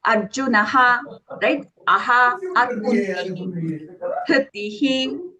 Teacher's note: That is what we call it as a Visarga. Okay, the Visarga usually takes the sound of the vowel it is following.